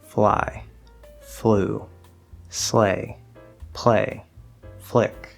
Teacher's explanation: it's not a very clear L and you might not hear it at all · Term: half L